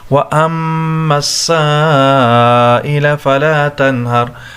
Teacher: مد اور حمزہ دونوں ایک کلمہ میں ہے، لہٰذا یہاں پر مد متصل بڑا مد کیا جائے گا، اس کو کھینچیں گے ہم